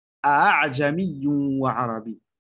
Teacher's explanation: Le seul endroit où on fait le tashil, c'est-à-dire le deuxième Hamza, on le transforme en moitié-moitié entre le alif et le Hamza